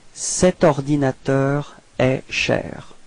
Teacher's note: no pause, no break between the cet and ordinateur